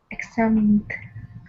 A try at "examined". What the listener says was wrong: Eggs. It sounds like eggs. Sometimes EX sounds like X. And sometimes it sounds like eggs. Eggs. Examined. Eggs. Eggs, not X. Eggs.